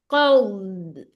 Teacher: आपकी आवाज दौद में ऐसी आएगी जैसे आप कुछ निगल रही हैं, ठीक है, अंदर की तरफ आवाज आएगी। कौद, और इसकी आवाज बहुत ज्यादा चलती है।